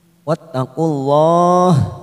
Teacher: dalam jalalah kita baca tafkim karena didahului dhamma